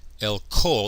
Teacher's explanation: Remember, kol, when it doesn't have a makef, has a holum. With a makef, it loses its accent, and so we have a short o here, a kametz hatuf. El kol, so it's pronounced o rather than a long a.